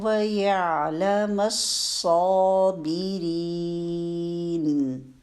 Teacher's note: آئین کو ٹائم دیں گے، آئین ساکن آیا ہوا ہے۔ الصابرین، صاد مشدد ہے، مشدد میں جو پہلا صاد آپ ادا کریں گے ساکن، اس کو اچھا سا ٹائم دینا ہے، موٹا بھی کرنا ہے آواز کو، اور اس کو شارپ آواز کے ساتھ، یعنی اس میں صفیر کی جو صفت ہے وہ لازمی لانی ہے۔